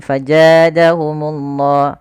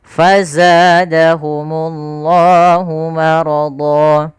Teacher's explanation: Harusnya ada aliran suaranya dan dia sifatnya jahar. Jahar itu tertahannya nafas tapi mengalirnya suara.